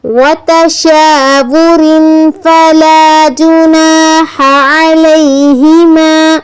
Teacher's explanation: ہا جو سینے سے نکلتی ہے وہ نہیں پڑھنی، جہاں ہا حلق سے نکلنے والی ہا ہے